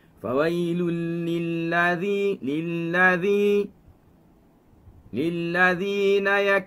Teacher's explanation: Flatkan lidah ketika menyebut huruf lam fathah.